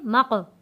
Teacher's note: मीम क़ाफ ज़बर मक़, मीम क़ाफ, क़ाफ देखें नुक्तों वाला क़ाफ है और क़ाफ के ऊपर जज़म भी है। नुक्ते वाला क़ाफ हो उसको मोटा पढ़ेंगे, आवाज़ को भारी रखेंगे और उसको पुर पढ़ेंगे